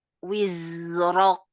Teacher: Ro-nya angkat lagi untuk tafkhim.